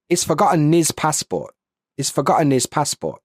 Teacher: So the H disappears, but an N shows up.